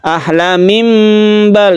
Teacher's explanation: Tanwin berubah menjadi mim mati, maka kita sebut dengan iklab ya. Iklab membalikkan suara nun mati menjadi mim mati karena bertemu dengan ba.